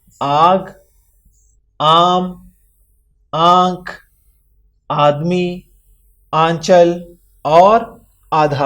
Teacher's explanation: مد سے الف کی آواز تقریباً دگنی یعنی 2 گنا ہو جاتی ہے